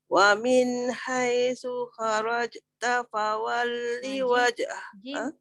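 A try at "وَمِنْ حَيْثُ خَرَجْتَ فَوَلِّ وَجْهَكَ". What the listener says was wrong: Jim tu heret kan? Kharajta fawalli wajh. Jangan putus. Kharaja, jangan je. Dia macam seolah-olah lah. Kharajta macam tu. Kharajta fawalli wajhak.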